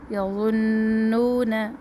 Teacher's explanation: نون مشدد ایک الف کے برابر ٹھہرے